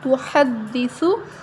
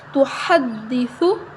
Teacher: ہا کو باریک پڑھنا ہے سا کو نرم پڑھنا ہے